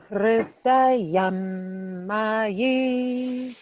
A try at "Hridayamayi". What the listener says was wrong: Good. One more time, please.